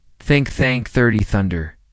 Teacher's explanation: Put your tongue gently between your teeth and blow air out for the TH in think.